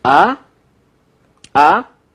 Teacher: So the second one is rising. It's a rising tone. Ah, ah. It kind of corresponds to the English when you say ah or something like eh.